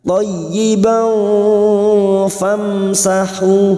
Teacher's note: mim sukun dibaca jelas tanpa mendengung idhar safawi